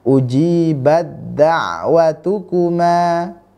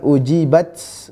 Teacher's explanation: tanda sama sekali tidak ada harakat tidak ada tanda sukun Maka langsung cara membacanya langsung masuk ke huruf Dal setelah ta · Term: idgham sempurna